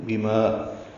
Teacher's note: فَأَخَذَتْهُمْ صَاعِقَةُ الْعَذَابِ الْهُونِ بِمَا با کو جلدی سے پڑھنا ہے، ما الف مدہ ہے، 2 حرکات لمبا ہے